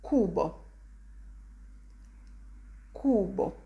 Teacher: pay attention to the u sound i remind you it's very cut short and strong